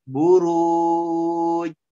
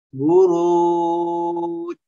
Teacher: ja ini memiliki sifat jahar dan juga memiliki sifat syiddah